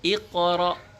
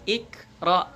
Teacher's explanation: Oke, huruf qaf iqra, bukan ikra, tapi iqra. Ya, karena huruf qaf termasuk huruf qalqalah, jadi dipantulkan.